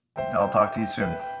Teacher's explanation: a serious tone is expressed with flat intonation